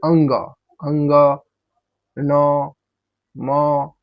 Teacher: पंचमाई पांचों को आप बोलिएगा जब तो आपका आवाज कहां से निकलेगा तो नाक द्वारा आवाज निकलता है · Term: अनुनासिक